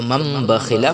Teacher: تنوین یا نون ساکن کے بعد با آئے تو نون کو میم سے بدل کر غنہ اور اخفاء کے ساتھ پڑھیں گے، اس کو اقلاب کہتے ہیں۔